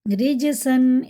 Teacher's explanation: را زیر کے ساتھ باریک پڑھیں گے